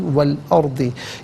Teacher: अर्दी में रा साकिन मा कबल हमज़ा पर ज़बर, रा साकिन को पुर करके पढ़ा जाएगा